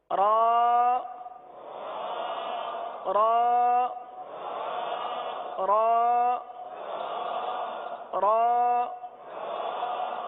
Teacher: اب را کے لیے زبان جو ہے یہ دانتوں کی تالو کی جانب والے حصے کی طرف مڑتی ہے اور سیدھی ہوتی ہے، اس طرف جاتی ہے اور سیدھی ہوتی ہے.